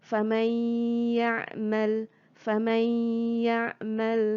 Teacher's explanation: Hukumnya ialah idgham ma'al gunnah. Jadi mesti masukkan bunyi nun sakinah masuk di dalam ya dengan dengung